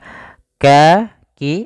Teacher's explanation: Maka menyamarkannya langsung ke huruf kaf. Kalau kaf makhraj huruf kaf itu kan di pangkal lidah mendekati huruf qaf.